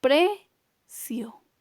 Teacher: tiene la mayor intensidad de voz ahora en la penúltima sílaba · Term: palabra grave